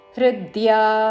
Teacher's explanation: హృ మీద ఆఘాత, ద్యా దీర్ఘము